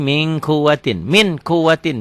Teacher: Min ditulisnya min, dibacanya jadi ming.